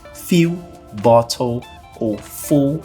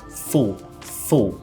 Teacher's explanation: no inglês a gente vai pronunciar quase que engolindo quase que deixando o l mais profundo